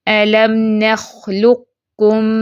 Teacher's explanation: پہلے ہم اس کو قاف کے لیے آواز موٹی کریں گے، پھر کاف پہ آتے آتے آواز کو باریک کر دیں گے